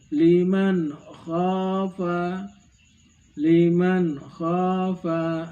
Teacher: kha yang keluar dari ujung tenggorokan